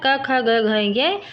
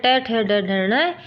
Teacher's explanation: तो इन सब का उच्चारण स्थान ये होता है कै वर्ग का कंठ, चै वर्ग का तालु, टै वर्ग का मूर्धा, तै वर्ग का दंत और पै वर्ग का ओष्ठ